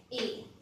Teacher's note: उसका उच्चारण कंठ और तालु दोनों से होता है, इसलिए यही आपके यहाँ पर होने के लिए सबसे उपयुक्त है।